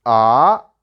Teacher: Ah means you have to increase your voice from low to high pitch. So ah is the second tone.